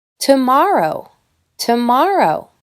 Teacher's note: I don’t say “TOE-morrow”, I say “t’morrow”. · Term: schwa